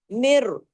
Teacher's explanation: میم کس میں جڑ رہا ہے؟ را کے اندر، یہ بغیر غننے والا ادغام ہے